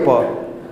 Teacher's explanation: होंठ ऑटोमेटिक आपस में स्पर्श करेंगे, है ना। अब होंठ को पकड़ के बोलिए प ना, तो वो ऑटोमेटिक आपके हाथों को होंठ की तरफ ले आएगा।